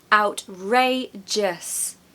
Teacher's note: 3 syllables. Ray is very much pronounced louder, so it's the stressed part.